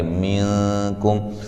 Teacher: یہاں نون ساکن کا باریک اخفا ہے